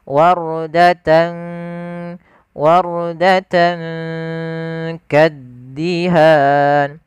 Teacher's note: kita samarkan tannya ke huruf kaf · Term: ikhfa